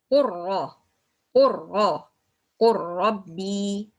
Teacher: I make idgham and merge between lam and ra. And I pronounce to ra instead of lam. That means the ra it will turn with shadda.